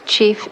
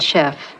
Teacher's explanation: We know that the first one, chief, was borrowed before the 16th century, and the second one, chef, after the 16th century, because we know that French underwent a sound shift in the meantime, from the ch sound to the sh sound in that environment